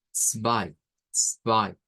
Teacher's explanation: la Z se pronuncia como esta TS que debemos tener en cuenta que es un africano, ¿verdad? · En el Deutsch aparece al principio, como en el caso del número 2, que debemos decir zwei, zwei. Entonces suena primero la T y eso quizás para nosotros es un poco raro